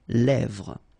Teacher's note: Same thing here, final S not pronounced, and then this E accent grave here, it gives you the E, really open sound. Lèvres.